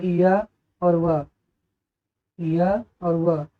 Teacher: तो अर्धस्वर हमारे होते हैं, इनकी परिभाषा है कि इन ध्वनियों का उच्चारण करते समय मुखांग हमारे ना के बराबर स्पर्श करते हैं